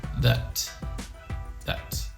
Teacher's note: when it's unstressed the ah sound becomes a schwa sound